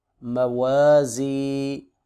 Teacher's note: میم زبر ما، واو زبر الف و، مو، زا زیر یا زی، موازی۔ زا حروف استفیریہ میں سے ہے، سیٹی کی آواز سے پڑھیں گے